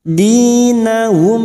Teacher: mim sukun bertemu lam terang di bibir namanya Idhar syafawi